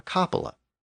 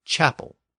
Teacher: Martin's famous cloak, or capa, became a holy relic, and the place where it was stored was called a cupola. But then, within standard Old French, the initial K sound shifted to a CH sound, and cupola became chapel.